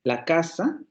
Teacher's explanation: la casa es una frase en donde las sílabas que no están acentuadas se agrupan en torno a la sílaba que está acentuada y eso es lo que le llamamos frase o no lógica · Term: frase fonológica